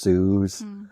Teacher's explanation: people in a lot of northern communities didn't make a distinction between S and esh. So shoes would be pronounced shoes.